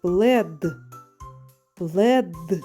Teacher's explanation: звук д знаходиться в кінці слова він твердий